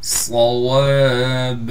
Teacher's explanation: صاد کو موٹا کر کے پڑھنا ہے، صاد میں سیٹی بھی ادا کرنی ہے، واو کے بعد الف ہونے کی وجہ سے واو کو بھی ایک الف کی مقدار کھینچیں گے، اور جب با پر وقف کریں گے تو با کو بھی ایک الف کی مقدار کھینچ کر پڑھیں گے۔